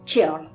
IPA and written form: tʃɛɔrl (cheorl)